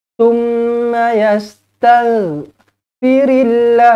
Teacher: lafzul jalalah dia baca nipis kerana sebelumnya berbaris bawah. Firillah yajidillah, sekali lagi lafzul jalalah nipis.